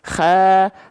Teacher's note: Kho dilafalkan dari ujung tenggorokan atau tenggorokan paling atas.